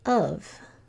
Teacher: as it really is and then as you hear it so I hear two sounds in of I hear uh and V